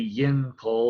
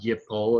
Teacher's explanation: Well, it would be yin pol, but the noon assimilates because it's a consonant cluster